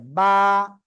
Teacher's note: বা, দুই ঠোঁটের ভিজা অংশ থেকে বা, এক আলিফ টান হবে।